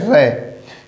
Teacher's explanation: जब हम रे का उच्चारण करते हैं तो हमारी जिह्वा तालु से लगकर एक साथ रिपटी हुई आगे जाएगी, इसीलिए इसका नाम हमने लिख दिया लुंठित वर्ण है।